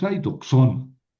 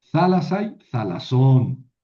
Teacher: aquí el acento en el genitivo plural siempre cae en la última sílaba